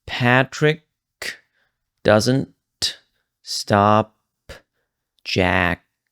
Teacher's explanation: I actually released every single ending is what I did here, right? So if we listen to that again, Patrick doesn't stop Jack.